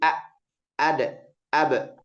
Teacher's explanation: Sedangkan pada huruf syiddah itu betul-betul terputus suaranya betul-betul terputus tidak ada aliran.